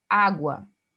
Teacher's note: o U sendo pronunciado, então eu teria um ditongo crescente